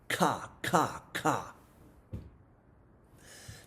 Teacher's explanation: Now, that K sound is produced way back in the back of the throat. And if there's damage to those lower cranial nerves, the person won't be able to say ka, ka.